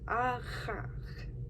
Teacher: you raise the back of your tongue up to the uvula and you can you like restrict the airflow and then you also voice that